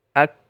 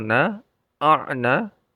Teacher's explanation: ini jahar, jadi tidak ada napas yang keluar